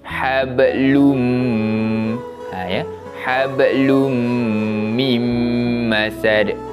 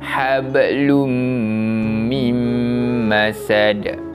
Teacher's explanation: Tanwin tersebut kita tak baca hablun. Kita masuk terus pada huruf selepasnya iaitu huruf mim dan dibaca dengan bacaan dengung. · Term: idgham bi gunnah